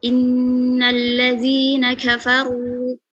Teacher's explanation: Ro tafkhim, pangkal dan ujung lidah naik, tengah lidah turunkan.